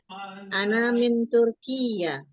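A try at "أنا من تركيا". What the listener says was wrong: Yang kedua tidak bertasydid, Turkiya.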